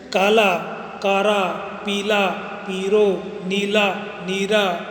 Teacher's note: ल के स्थान पर र का उच्चारण होता है